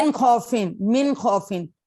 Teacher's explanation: मिन खौफिन, मिन खौफिन, क्योंकि ये भी खार है, ये हरूफे हल्की आ रहे हैं, तो इनमें इजहार करेंगे, उसको ठीक पढ़ेंगे पूरा जाहिर करके नून।